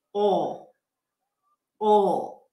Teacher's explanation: It sounds like an ooh or a W sound, all. That's the dark L.